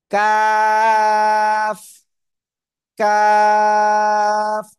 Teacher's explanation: জিহ্বার গোড়া থেকে একটু আগে বাড়িয়া, তারপর আবার উপরে তালুর সাথে লাগিয়া চিকন আওয়াজে উচ্চারণ করতে হবে চার আলিফটা নিয়া।